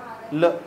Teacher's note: ल यो रेखा वाला, यो लिखा हुआ सा, ल को पता ना क्या बोल रहा, ल को पीछे भी लिखा था मैंने थोड़ी पहले, पार्श्विक, पार्श्विक वर्ण, साइड से हवा बाहर निकलो